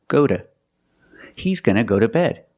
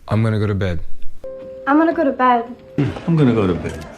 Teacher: Da-da-da, go to. So to is pronounced duh, go to.